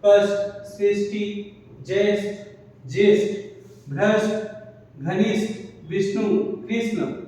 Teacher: उसका वजह क्या है कि हमारा ट वर्ग जो होता है मूर्धन्य होता है, इसलिए हम मूर्धन्य स का भी प्रयोग कर रहे हैं